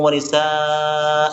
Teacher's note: Walaupun tidak diakhiri dengan alif, tetap dibaca panjang.